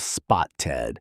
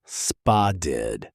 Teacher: That double T in the middle doesn't sound like a hard T. It softens into something closer to a D sound. So instead of spoted, Americans say something closer to spa did. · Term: flap t, flap T